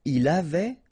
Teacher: final T not pronounced